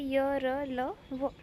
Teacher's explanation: ज्या व्यंजनांचा उच्चार करताना जिभेचा उच्चारक अवयांशी पूर्ण स्पर्श होत नाही स्पर्श व्यंजन मध्ये जिभेशी पूर्ण स्पर्श होत होता याच्यामध्ये पूर्ण स्पर्श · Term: अंतस्थ वर्ण